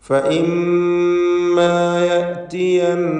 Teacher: മീം മുഷദ്ദദ നൂൻ മുഷദ്ദദ, ഷദ്ദുള്ള മീമും ഷദ്ദുള്ള നൂനും വന്നു. രണ്ടിനും മണിച്ചുകൊണ്ടുള്ള രണ്ട് ഹറക്കത്തിൻ്റെ അളവിലുള്ള ഉന്നത്ത് കൊടുക്കണം.